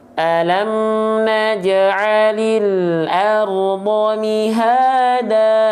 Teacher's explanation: Mad iwad, ya dia dibaca dengan kadar panjang 2 harokat.